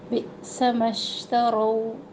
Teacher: شین میں تفشی کی صورت ہے، آواز پھیلتی ہے